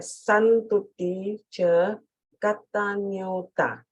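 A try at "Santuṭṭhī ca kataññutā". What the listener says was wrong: Ah, great, great. Much better.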